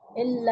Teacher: اس کو لام سے ملا کر پڑھیں گے کیونکہ تشدید لگی ہوئی ہے اور 2 بار پڑھیں گے سختی کے ساتھ